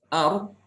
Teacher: Hanya bedanya kalau ro itu dia itu disertai dengan getaran. Jadi ujung lidah itu bergetar sedikit. Ya. Tapi tidak boleh berlebihan, ya. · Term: takrir